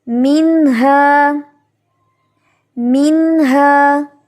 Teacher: وہ حروف حلقی میں سے ہے، یعنی حلق سے ادا ہونے والا حرف ہے. تو اب نون ساکن کے بعد ہا ہے تو ہم یہاں پہ اظہار کر کے پڑھیں گے